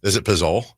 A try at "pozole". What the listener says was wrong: No. Don't put so much emphasis on the Z. Pozole.